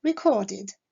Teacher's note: Le verbe record se terminant par le son de, la terminaison ed se prononcera id